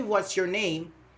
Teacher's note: we rise our intonation, or we show it like this, like a plane taking off